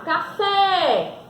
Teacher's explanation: Ela tem uma sílaba tônica. Quando eu falo café, então eu falei com mais intensidade a sílaba fé, ou seja, a última sílaba da palavra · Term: oxítona